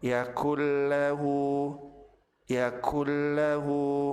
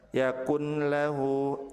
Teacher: Apabila nun sukun bertemu dengan lam, maka nun dilebur ke huruf lam tanpa ditahan dan tanpa disertai dengan gunnah.